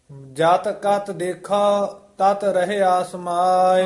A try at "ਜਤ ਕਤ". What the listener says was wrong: ਹਾਂਜੀ ਜਾਤ ਕਤ ਦੇਖੋ। ਜਾਤ ਕਤ ਪੋਲੀ ਉਚਾਰਨ ਕਰਨੇ ਆ ਪਦ। ਜਾਤ ਕਤ ਦੇਖੋ ਤਤ ਰਹਿਆ ਸਮਾਏ। ਤਤ ਨਹੀਂ ਕਹਿਣਾ ਕਸ ਕੇ ਪੋਲਾ ਹੀ।